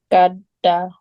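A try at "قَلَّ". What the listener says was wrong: Qalla. It's lam.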